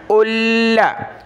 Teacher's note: حمزہ لام پیش ال، لام زبر لا، الا، لام کے اوپر تشدید ہے، اس کو ہم نے جمع کر سختی کے ساتھ پڑھنا ہے